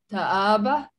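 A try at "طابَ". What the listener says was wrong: No, you don't read this alif here. The alif here is here to elongate the movement of the fatha. So it just taba.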